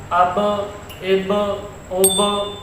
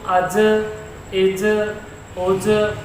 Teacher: یہ حروف قلقلہ میں سے ہے اور یہ ساکن ہے، تو ان میں قلقلہ خوب ظاہر ہوگا